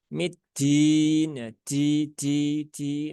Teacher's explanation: jadi terkadang dalnya itu berubah, sifat syiddahnya hilang. Ya, kemudian berubah jadi rokhwah dan juga kadang juga jadi hamas itu kan. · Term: Menghilangkan sifat syiddah